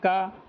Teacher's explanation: अल्प्राण भी होता है। कम वायु निकलना और अघोष भी होता है।